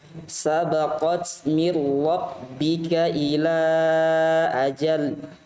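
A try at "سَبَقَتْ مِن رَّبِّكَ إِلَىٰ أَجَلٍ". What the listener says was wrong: Coba ulang. Sabaqat. Dipanjangkan lagi.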